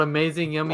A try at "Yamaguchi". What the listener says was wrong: Not with a U, it's YAMA. I'm trying to correct you, like it's Yama.